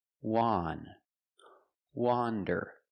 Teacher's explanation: Wander is pronounced with the short O sound, the sound ah, like you hear in hot and stop.